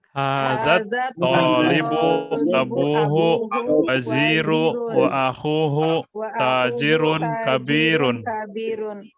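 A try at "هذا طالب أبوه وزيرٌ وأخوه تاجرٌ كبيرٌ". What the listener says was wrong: Wazirnya pakai tanwin enggak? Iya, pakai tanwin ya.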